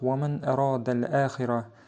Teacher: Burada sukununun وَمَنْ sukununundan sonra əradə həmzə gəlmişdir və burada ishar qaydası baş verir. Sukunundakı n səsi aşkara çıxaraq oxunur